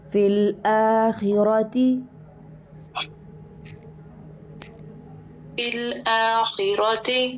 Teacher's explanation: را کو بھی موٹا کریں گے، خا کو بھی موٹا کریں گے آخرہ میں، اور حمزہ کو باریک رکھیں گے، منہ کھولیں گے.